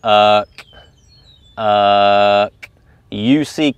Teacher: The tip of my tongue is down. Uh and the back part of my tongue is raising to the roof of my mouth. · It's not really even a word, but we're saying the word UCK, and really think about what your tongue is doing when you say that word. The tip of my tongue is down, and the back part of my tongue is raising to the roof of my mouth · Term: K sound